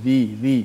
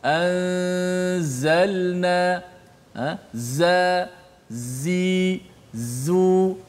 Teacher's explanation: Dia keluar daripada antara kedua-dua gigi kita, keluar sifat safir tu apabila menekan makhraj huruf zai. So sifat safir itulah suara desiran yang kuat.